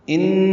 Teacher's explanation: نون مشدد پہ غنہ ہے، آواز ناک کے بانس سے ملے جا کر دو حرکات تک ٹھہرائیں گے